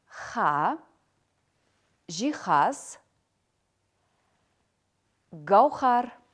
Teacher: Х. При произношении данного звука голосовые связки сближаются, но не вибрируют. Поток воздуха проходит стремительно, не встречая преград.